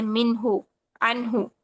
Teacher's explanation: فوراً فوراً ادا کرنا ہے، نون پہ رکنا نہیں ہے آپ نے. ٹھیک ہے، اور جھٹکا بھی نہیں دینا کیونکہ یہ قلقلہ کا حرف نہیں ہے. ٹھیک ہے، تو نون ساکن کو ادا کر کے فوراً بعد والا حرف ادا کریں. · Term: اظہار